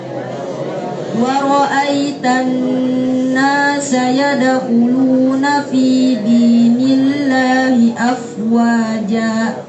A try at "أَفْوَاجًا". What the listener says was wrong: Jangan afwaja, salah. Afwaja dilepas. Ja. Jangan menutup dengan hamzah ya. Ja, salah.